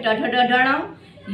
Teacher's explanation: ट ठ ड ढ ण ये हो गए और इनका उच्चारण स्थान क्या होता है इनका उच्चारण स्थान मूर्धा होता है